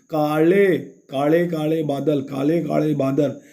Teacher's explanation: ल जो हम लोग लपेट कर बोलते हैं, मूर्धा को पूरी तरह से और थोड़ा गोल करते हैं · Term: मराठी से ल